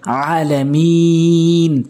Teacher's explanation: আমরা যদি ওয়াকফ করি আলামিন, 3 আলিফ টেনে ওয়াকফ করতে হবে